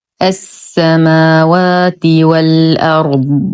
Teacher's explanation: نؤكد على استطاله الضاد ورخاوة ضا